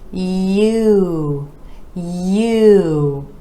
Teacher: For this vowel sound, we're gliding from the y to oo. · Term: vowel sound U